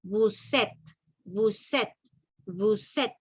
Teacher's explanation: La S se une con la E con la primera E de la segunda palabra y lo hacemos una sola. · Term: liación